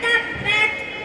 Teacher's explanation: என்னுடைய பிறப்பிடம் இரு உதடுகளின் உட்புறத்தில் இருந்து நான் உருவாகிறேன்.